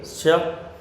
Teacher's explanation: जो हमारी जीभ का जो अग्रभाग है वो अपने ऊपर के भाग से टकरा रहा है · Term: तालव्य